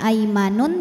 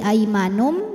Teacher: tanwin dhammah menghadapi huruf ba, maka bunyi tanwin diganti bunyi mim. Jadi tadinya aimanun jadi aimanum, jadi m ya, dan ditahan, dengungkan. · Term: iqlab